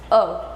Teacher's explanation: इसकी स्थिति जो है वो उदासीन रहती है। अ जब हम बोलते हैं तो हमारे जो ओष्ठ है वो किसी भी आकृति का रूप नहीं लेते, ना वो वृत्ताकार दिखाई देते हैं, ना वो खुले हुए दिखाई देते हैं। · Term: उदासीन स्वर